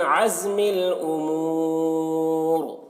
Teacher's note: اس سکون عارضی سے پہلے واو مدہ ہے، اس وجہ سے یہاں پر مدہ عارض وقفی ہوگا